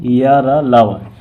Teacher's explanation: इनका उच्चारण जीभ, तालु, दांत और ओठों के परस्पर सटाने से होता है, किंतु कहीं भी पूर्ण स्पर्श नहीं होता है। अतः ये चारों अंतस्थ व्यंजन अर्धस्वर कहलाते हैं।